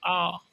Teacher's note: विवर्त यानी अधिक खुला रहेगा